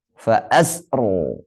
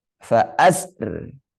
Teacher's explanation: Fa asri kalau dibaca boleh tebal, boleh tipis, tapi tipis lebih utama.